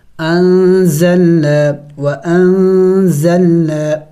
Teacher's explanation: نون ساکن اور تنوین پر اخفا ہوتی ہے، یعنی ناک میں آواز چھپانا ہوتا ہے نون اور تنوین کی